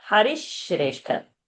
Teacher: Shakara should come because in Shrestha it is Sh and a R and not Sa and a R. It's Shra, Shri and not Sri.